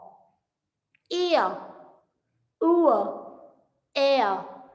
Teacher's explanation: ये दो वॉवल्स हैं, एक जो है वो दूसरे में ग्लाइड कर रहा है. ई अ, उ अ, ए, ए भी आप कह सकते हैं.